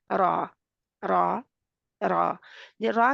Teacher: र मोटी भी होती है और जुंबिश भी पैदा होती है · के क्या है वाइब्रेशन इसमें र तकरार सॉरी पाया जाता है तकरार है थोड़ा सा जैसे दोबारा पलट हुई आवाज इसकी दो दफा जैसे रा पढ़ी जा रही हो रा र